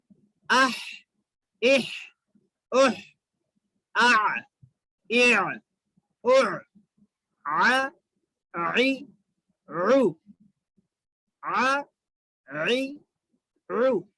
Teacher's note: حلق کے درمیانی حصے سے عین ادا ہوتا ہے